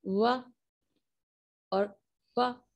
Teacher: जब हम ये साउंड वाह और वाह या करके हम प्रोड्यूस करते हैं, तो हमारे लिप्स हमारे टीथ से टच करते हैं